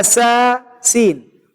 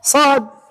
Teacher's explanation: إذا فخمنا السين من هنا، نرفع اللسان من هنا بتفخيم السين، تصير السين صادا